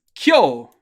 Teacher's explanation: notice how we do have a k followed directly by a y sound